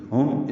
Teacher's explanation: ہا اقصی حلق سے ادا ہوگا، میم میں ہونٹ بند ہو جائیں گے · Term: اظہار شفیہ